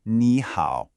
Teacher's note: When you have 2 third tones together, the first one magically changes into a rising second tone. So ni hao becomes ni hao.